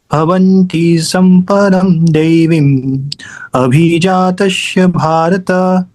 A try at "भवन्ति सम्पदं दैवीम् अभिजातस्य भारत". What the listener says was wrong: हाँ, तुम भी वही गलती कर। भवंती पे कम रुकना है, देवी पे ज्यादा रुकना है।